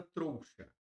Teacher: O ditongo começa no O e vai para o I. · começa no O, vai para o I. O som está descendo, então vou colocar um D aqui de decrescente, ditongo decrescente.